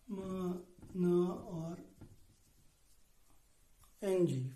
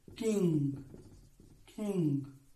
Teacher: when we pronounce ma or na or ng in king, the air passes through our nasal cavity. And such sounds are called nasal sounds.